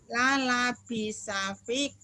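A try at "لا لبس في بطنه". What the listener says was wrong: Fi-nya panjang. Fi atau bi.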